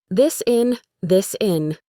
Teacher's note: The S sound at the end of this connects right to the I in the word in. So instead of this in, it sounds like the sin.